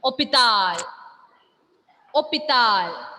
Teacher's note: H is silent because it is coming at the beginning.